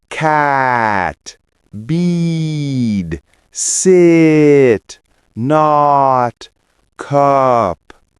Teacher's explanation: Feel your mouth open more for A and O and less for I and U.